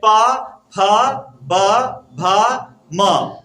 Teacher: बिना ओष्ठ का हम प फ को बोल ही नहीं पाते हैं।